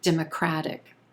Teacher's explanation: that t is sounding like a quick d it turns into a flap t